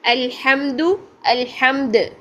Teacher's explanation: دال کو قلقلہ کیا ساکن کرتے ہوئے، وقف کرتے ہوئے